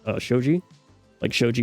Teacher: it's a vowel that you would hold longer than normal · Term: long vowel